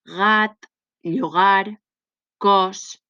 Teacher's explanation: I finalment les velars, perquè es pronuncien amb el vel del paladar.